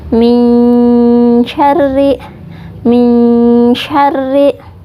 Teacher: Kita menyamarkan huruf nun sukun, mempersiapkan makhraj huruf shin. Cara membacanya ditahan dan dengung ya. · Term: Ikhfa hakiki